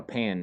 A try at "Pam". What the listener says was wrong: Pam. With an M.